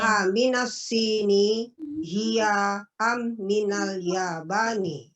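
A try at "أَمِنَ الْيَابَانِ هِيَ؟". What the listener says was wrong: Nah, intonasi pertanyaannya dong. Gimana dong? Yang enak. Aminasini hiya aminal yabani. Ada zauq, istilah dalam bahasa zauq, ada rasa yang kita ucapkan dalam bahasa. Karena bahasa itu memang harus punya rasa. Jadi kalau kita merasakan kalimat tanya, kita ungkapkan dengan kalimat tanya.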